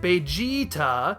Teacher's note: Toriyama took that, sliced off the end of it, and extended the middle vowel sound into a long E